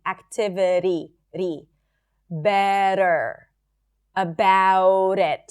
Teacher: The flap T is when the T appears between two vowels as in the word activity. It sounds like a really light D.